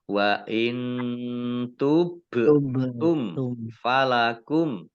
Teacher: Mim sukun bertemu huruf fa, bacaan izhar safawi. Dibaca jelas.